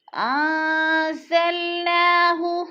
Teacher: انزلناہ، ناک کے اوپر کھڑی زبر ہے، کھڑی زبر کو 1 الف کے برابر کھینچ کر پڑھنا ہے